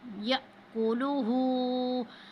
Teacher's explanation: جب الف پر جزم ہوتی ہے تو یاد رکھنا ہے ہم اس کو جھٹکا دے کے پڑھیں گے